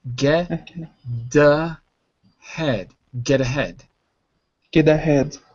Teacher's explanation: the T softens to a d when you're speaking quickly · notice how I said it with a d not a t